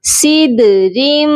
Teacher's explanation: دال حروف قلقلہ ہے اور یہ ساکن ہو رہا ہے اس لیے یہاں پر ہم آواز کو ڈبل کریں گے، صدرم۔ را کو میم مشدد کے ساتھ ملا کر پڑھا جائے گا اور غنہ کریں گے۔